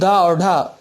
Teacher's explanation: लेकिन अगर रा अलग से पूछा जाए तो ये प्रकंपित या लुंठित है, हा काकले है, चा वर्ग स्पर्श संघर्षी है, दो ध्वनियाँ उच्छिप्त भी हैं। जीभ जब तालु पर आकर के नीचे गिरती है तो डा और ढा दो ध्वनियाँ बनती हैं, तो डा और ढा उच्छिप्त ध्वनियाँ हैं।